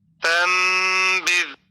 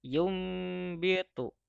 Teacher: iqlab mengganti huruf nun mati atau tanwin menjadi seperti suara huruf mim mati